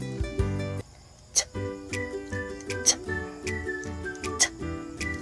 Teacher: Ang letrang T ay isang pasara na walang tunog sa puntong panggilagid o alveolar. Binibigkas ito sa pamamagitan ng dulo ng dila na sumasayad sa likod ng itaas ng ngipin at paglabas ng hangin.